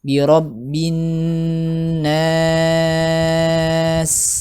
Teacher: huruf nun tasydid ditahan dulu ya, dia termasuk yang akmal matakun. · sin dialirkan, dia punya sifat rokhawah ya.